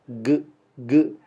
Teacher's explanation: maka bunyi G itu tercipta di dalam kerongkongan